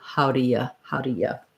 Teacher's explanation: so that ooh gets reduced to the schwa